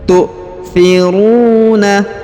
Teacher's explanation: Huruf ru dipanjangkan 2 harokat karena di depannya terdapat waw sukun.